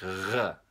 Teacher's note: a lot of times it's described as being pronounced kind of in the back of the throat. It sounds like R, something like that. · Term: French R